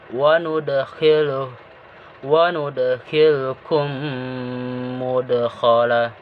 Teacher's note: Idgham mitsalain ini apabila mim mati bertemu dengan mim. Cara pengucapannya itu harus disertai dengan gunnah